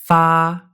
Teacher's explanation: This vowel is similar to English's as in father, but it's a bit more forward in your mouth. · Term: long a